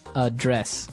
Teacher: So the verb address has the stress on the second syllable.